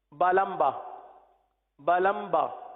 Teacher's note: اب میم جہاں سے ادا ہوتا ہے اس سے تھوڑا سا قریب ہی با ادا ہوتا ہے